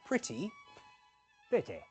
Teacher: If a word ends in an e sound in upper RP, it's reduced to a weaker I sound.